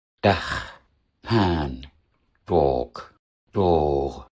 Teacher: das A unterscheidet sich nicht nur in der Länge, sondern auch in der Qualität. Das lange A ist gerundet. In manchen Dialekten geht es sogar in Richtung O und wird dann auch oft mit einem O geschrieben, was eigentlich falsch ist.